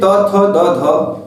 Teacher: आप त वर्ण को देखेंगे तो दंत वर्ण है